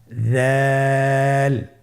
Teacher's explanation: উচ্চারণ করার সময় অবশ্যই 3 আলিফ টেনে পড়তে হবে। দালের মাখরাজ হলো জিহ্বার আগা সামনের উপরের 2 দাঁতের আগার সঙ্গে লাগিয়ে উচ্চারিত হয়।